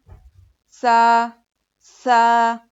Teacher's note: जुबान की नोक को सामने के 2 दांतों के किनारे में लगाने से सा अदा होता है।